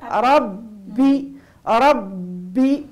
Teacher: أحسنتي أحسن من التلاوة الأولى، فقط ربي الباء هنا مضاعفة عندها صفة اسمها صفة الشدة انحباس الصوت، لابد يكون الزمن متاع انحباس الصوت معناها لأنها مضاعفة.